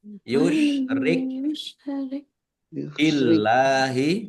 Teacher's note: Allahnya dibaca tipis karena harakat di depannya kasrah.